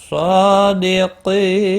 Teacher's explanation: قی یا مدہ ہے، ایک الف کے برابر کھینچ کر پڑھیں گے۔ قاف مستعلیہ ہے، پر پڑا جائے گا